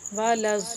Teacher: لام کے ساتھ جو الف ہے یہ الف نہیں پڑھیں گے، لام کو ضاد کے ساتھ ملائیں گے